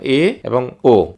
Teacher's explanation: এ এবং ও যখন আমরা উচ্চারণ করতেছি তখন দেখা যাচ্ছে যে আমাদের জিভাটা একটু নিচে নামতেছে তার মানে যে উচ্চমধ্য উচ্চমধ্য অবস্থানে আসতেছে এবং কি হাফ ক্লোজ